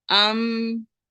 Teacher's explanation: मीम के लिए जो आपके होंठ होंगे वो थोड़े से इतने स्ट्रांगली बंद नहीं होंगे